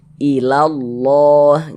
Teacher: Huruf lam yang di tengah nih huruf lam jalalah namanya. Nah, huruf lam jalalahnya ini kita baca tebal, kita baca tapkhim sehingganya kita baca ilallah.